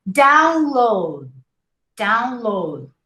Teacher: 2 syllables. And you don't hear the D. Code. That's why they're called final stops, because you gotta stop before you pronounce the consonants, okay?